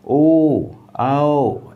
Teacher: जिस स्वर का उच्चारण करते समय हमारा मुख क्या हो जाए? पूरा गोल हो जाए। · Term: वृत्ताकार स्वर